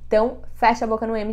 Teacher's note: uma palavra que termina com m vocês vão usar o m Fecha a boca no m é isso que vai diferenciar o som do M do n